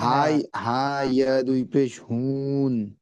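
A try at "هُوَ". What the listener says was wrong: হা ইয়া দু পেশ হুই, হুই, হুন নয়, হুই, বুজু, হুই।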